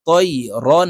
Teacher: তানুইনের পরে ইজহারের হরফ হামজা আসছে তাই এই র কে গুন্না ছাড়া স্পষ্ট করিয়া পড়বো